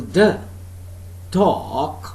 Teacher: So this time we have got D as phoneme, and if I use, for example, D, dog, so there is one slight puff of air, you can feel that.